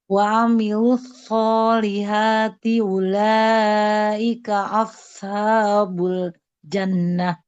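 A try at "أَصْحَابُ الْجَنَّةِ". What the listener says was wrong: Nah, sadnya. Nah, ini ya sadnya masih belum tebal.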